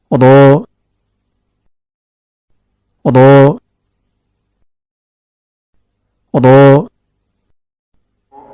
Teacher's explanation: Huruf ra keluar dari ujung lidah yang bertemu dengan gusi bagian atas.